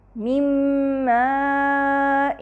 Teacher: نون ساکنہ میم سے مدغم ہو رہا ہے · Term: ادغام